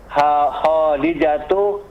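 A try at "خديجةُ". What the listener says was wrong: Nah, Khadijatu diperbaiki panjang pendeknya, dalnya yang panjang. Khadijatu.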